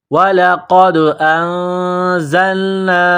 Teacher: قاف کو دال کے ساتھ پلس کرنا ہے، دال کے اوپر قلقلہ کرنا ہے، قاف کو موٹا کرنا ہے. وَلَقَدْ أَنزَلْنَا، حمزہ کو نون کے ساتھ پلس کرنا ہے.